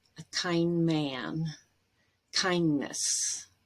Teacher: the d here is between two nasal sounds and we end up dropping it